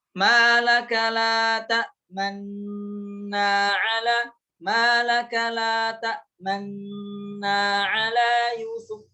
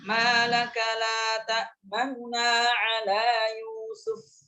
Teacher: Dengan isyarat bibir mencucu ke depan. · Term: ismam